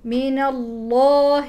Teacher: لفظ الجلاله مفخم لان قبله مفتوح